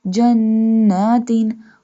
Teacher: We stretch the noon because noon has standing fatha sign.